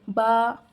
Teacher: बा को मुंह खोलकर एक अलिफ की मर्तबा खींचे।